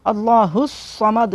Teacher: स्वाद को मोटा करना है, अल्लाहु समद, मोटा भी करना है, सीटी भी निकालनी है